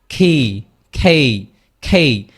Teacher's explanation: একটা জিনিস মনে রাখবেন, ক বলতে কোনো জিনিস ইংরেজিতে প্রনাউন্সিয়েশনে এক্সিস্টই করে না, এটা হচ্ছে অলওয়েজ খ